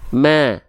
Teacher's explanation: Jadi dibacanya bukan ma tapi ma. Tipiskan fathahnya ya sambil senyum.